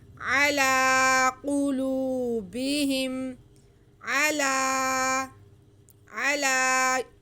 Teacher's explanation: لام کے بعد یا ہے، یا سائلنٹ ہے، یا نہیں پڑھا جائے گا، صرف لام کو ہم کھینچ کے پڑھیں گے